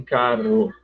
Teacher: eles dizem carro vibra duas vezes a língua